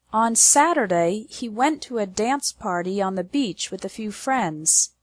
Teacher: The stress is on the words Saturday, went, dance, party, beach, and friends. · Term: strong words